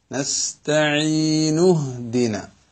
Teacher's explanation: അങ്ങനത്തെ അടയാളം കൊടുക്കുന്നത് അതിന്റെ തൊട്ടു മുമ്പത്തെ പദവുമായി ഇതിനെ ചേർത്തി വായിക്കുമ്പോൾ ആ ഹംസ ഉച്ചരിക്കരുത്, നേരെ ഹായിലേക്ക് പോകണം. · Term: വസ്ലിന്റെ ഹംസ